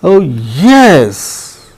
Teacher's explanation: Oh yes, that is rise and fall. · When we want to reinforce a certain meaning, we use the rise fall tone.